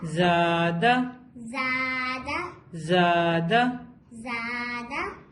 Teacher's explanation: لمبا کریں گے. اور جہاں پر الف مدہ ہے, الف جڑا ہوا ہے, اس کو ہم کیا کریں گے؟ دو حرکت لمبا کریں گے